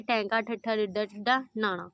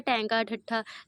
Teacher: ਤੇ ਉਸ ਤੋਂ ਬਾਅਦ ਦੇਖੋ ਉਲਟ ਜੀਬੀ ਵਾਲਾ ਵੀ ਕੁਸ਼ਚਨ ਸੀਗਾ ਜਿਨਾਂ ਧੁਨੀਆਂ ਦੇ ਉਚਾਰਨ ਸਮੇਂ ਜੀਭ ਦਾ ਅਗਲਾ ਨੌਕ ਵਾਲਾ ਹਿੱਸਾ ਉਲਟਾ ਹੋ ਕੇ ਕੋਮਲ ਤਾਲੂ ਨੂੰ ਛੂਏ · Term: ਉਲਟਜੀਬੀ ਵਿਅੰਜਨ